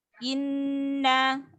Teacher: Jadi gunahnya harus lebih lama, tidak boleh terburu-buru karena dia tingkatannya masuk ke gunah akmal